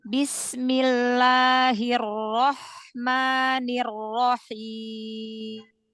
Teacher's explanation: Bertemunya dua bibir kan huruf mim kasih guna sedikit